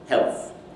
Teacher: we anticipate the production of that dental consonant, so the tongue moves forward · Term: allophonic variation